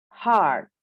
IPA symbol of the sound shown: ɑ: